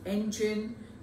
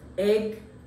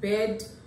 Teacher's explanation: this is a front vowel. That means it is articulated by the front part of the tongue.